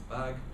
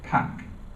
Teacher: The vowel is, you could say, sort of underlyingly the same, but in fact what you can see is that in bag it's significantly longer than in pack.